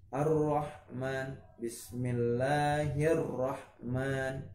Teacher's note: Langsung dimasukkan ke huruf selanjutnya, itu huruf ro-nya tadi. Ar-Rahman harus ada tasydid ya, karena idgham dimasukkan. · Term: idgham syamsiyah